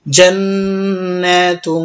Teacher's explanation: ইখফার হরফ আসার কারণে গুণনা হয়েছে, এই জন্য এই গুণনার নাম হচ্ছে ইখফা গুণনা । আমরা গুণনা করব এখানে জান্নাতুন, তা জিম জবর তাজ, রা